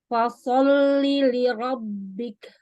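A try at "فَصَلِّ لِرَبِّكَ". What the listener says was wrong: Ya, hati-hati ya, bibirnya agak bentuk O loh tadi.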